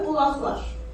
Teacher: Sonra samit gələrsə, o zaman q səsi x səsini verəcək. Baxaq. Bulaqlar, tələffüzdə bulaqlar.